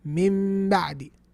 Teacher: The ba and the meme, they have the same articulation point. So since you're already there, you might as well pronounce a meme.